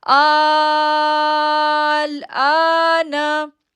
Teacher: اب دیکھیں حمزہ کے اوپر مد ہے، بڑی مد ہے، تو اس کو ہم پڑھیں گے آل، آل۔ اب آ کو کھینچیں گے پہلے 6 سیکنڈ کے لیے، پھر لام کے ساتھ اس کو جوڑیں گے